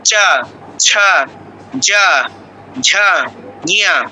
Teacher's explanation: দেখবেন এই তালুতে জিহ্বাটা স্পর্শ করছে, ঘষা দিচ্ছে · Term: তালব্য বর্ণ